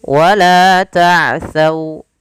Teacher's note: ketemu wau dia lembut dalam pelafalannya bacaan lin